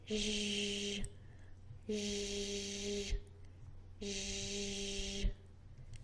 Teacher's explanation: This is pronounced similarly to the Z, zzz, but you're going to push it back to the middle of your mouth.